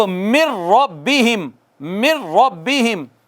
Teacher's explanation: یہاں پر ناک میں آواز نہیں گئی، را میں ناک میں آواز نہیں جاتی، یہاں پہ نہیں گئی۔